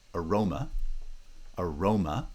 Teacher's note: this pre-foot syllable always undergoes vowel reduction. Vowel reduction affects unstressed syllables.